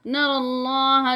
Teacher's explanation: نَرَى اللَّهَ، یہ یا نہیں پڑھی جائے گی، را کے اوپر جو ہے زبر ہے، تو یہ لام جو ہے کھڑی زبر والا، یہ موٹا ادا کیا جائے گا